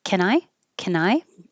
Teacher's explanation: It's a yes no question, so it'll go up.